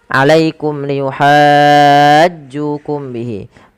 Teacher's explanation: izhar syafawi yang di mana suara mimnya harus diperjelas